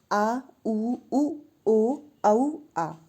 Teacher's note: अब जीभ का पश्च भाग काम करता है। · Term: पश्च स्वर